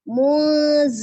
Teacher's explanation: nun sukun bertemu dengan zainya, ikhfa dibaca ya, samar ditahan 2-3 harokat juga, kemudian lun, mat arid li sukun kembali.